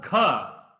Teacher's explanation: there is a air coming out with the Gha